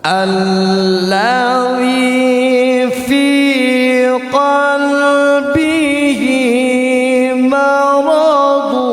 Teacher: Kalau yang namanya dengung, suaranya harus keluar dari hidung. Maradu dengungannya ditahan tiga harakat. · Suaranya sengau. Karena yang dinamakan dengung itu suara hidung.